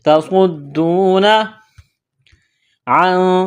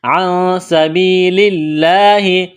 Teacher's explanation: دال میں سختی کریں گے، واو مدہ ہے، الف کے برابر کھینچنا ہے. تصدون عن، نون ساکن کے بعد سین ہے، یہاں پر اخفا کریں گے، آواز ناک میں چھپائیں گے